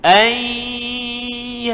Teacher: Masuk bunyi nun dalam ya plus dengung.